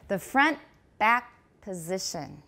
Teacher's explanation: do you also notice that long pause after the K before the P? PTK 后面停顿的时间很长, 同时 back 有重音只有一个音节, it's going to be really, really a long pause.